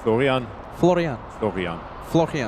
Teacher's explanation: no rolling R in German